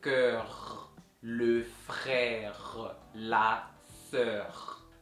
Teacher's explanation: a gente, por fazer o som do R, pega o som na garganta. Fica como se você estivesse roncando.